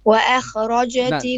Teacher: The alif is flat. Only the kha is heavy. Don't say and then kha.